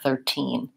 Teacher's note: But in 13, since this is a stressed syllable, I'm going to use an actual T there, 13. So that happens also for 40 and 50 and 14 and 15.